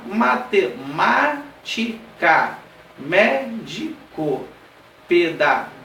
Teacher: são aquelas que têm o que é um ponto mais forte a sílaba mais forte é na antepenúltima posição o última penúltima antepenúltima conta de trás pra frente a terceira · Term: palavras proparoxítonas